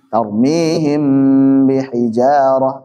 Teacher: Mim dari dua bibir nempel. Sedangkan ba dari dua bibir nempel juga.